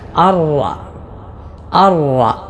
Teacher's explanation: ഇവിടെ സുക്കൂനുള്ള നൂനിന് ശേഷം റാ ആണല്ലോ വന്നത്. അങ്ങനെ സാക്കിനായ നൂനിന് ശേഷം ലാമോ റാവോ വന്നാൽ ഇദ്ഗാം ബിലാഗുന്ന അഥവാ മണിക്കാതെ ഇദ്ഗാം ചെയ്തുകൊണ്ടാണ് ഓതേണ്ടത്. അതിനാൽ ഇവിടെ നൂൻ ഉച്ചരിച്ചുകൊണ്ട് അൻറആഹു എന്നല്ല അർറ അർറ ഇങ്ങനെയാണ് ഓതേണ്ടത്.